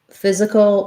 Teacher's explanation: physical has first syllable stress